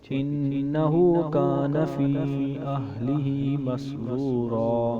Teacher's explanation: انہ کے اوپر تشدید ہے، ادھر گنہ کریں گے، ہا کو ہم لمبا کریں گے۔